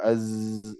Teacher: Kalau za, ya tertahan nafasnya. Kemudian rokhawah, suaranya mengalir.